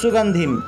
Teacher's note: অনুস্বারের পরিবর্তে ম উচ্চারিত হবে